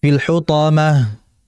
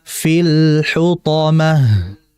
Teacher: Kemudian berikutnya fil, lam bersifat tawasud. mengalir tapi nggak terlalu lama ya, maka dibaca fil hutamah. Ada aliran sedikit pada lam.